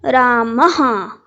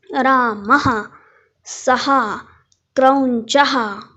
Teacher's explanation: Forcefully आपण तो विसर्गाचा उच्चार बाहेर फेकला पाहिजे. तो फेकताना नैसर्गिकपणे आपलं तोंड उघडतं, त्यामुळे आहा असा उच्चार येतो.